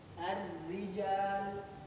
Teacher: Ra tipis biasa, lidah biasa, tidak naik, masih ada kosong banyak. Ra biasa ini, di sini makhraj ra.